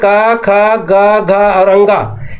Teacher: ये पांच अक्षर कंठ से निकलता है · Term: क वर्ग